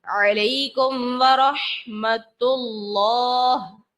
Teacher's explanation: میم ساکن کے بعد واو ہے، با اور میم کے علاوہ لفظ ہے، تو ہم نے یہاں لگا دیا اظہار شفوی کا قاعدہ اور غنہ نہیں کیا